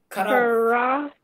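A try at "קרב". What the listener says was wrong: Let me hear the vet very clearly at the end.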